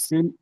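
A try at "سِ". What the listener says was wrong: সিন টান দেন, তিন আলিফ টান অক্ষরটা।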